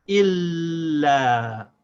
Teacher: by dragging the sound of the lam, we say il, and without stopping the sound of the lam, we say la. Il, la. Now we join it together, we say illa.